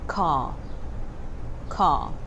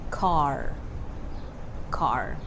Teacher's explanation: In American accent, they always tend to pronounce the letter R, and that's quite different with the British accent.